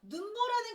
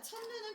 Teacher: 첫 음절에서만 길게 발음합니다. 눈보라는 길지만 첫 눈은 짧아요.